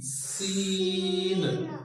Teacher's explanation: सीन आवाज आना सीटी की, सीन।